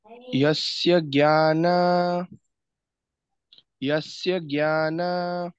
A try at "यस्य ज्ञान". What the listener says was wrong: हाँ, जो बंधन उच्चारण खोटू छे। ज्ञा जे संयुक्त अक्षर छे बरोबर। ग अने य जॉइंट शब्द छे, एटले जॉइंट शब्द हमेशा प्रेस करीने बोलवानो, थोड़ो एना ऊपर भार आपवानो। यस्य ज्ञान यस्य ज्ञान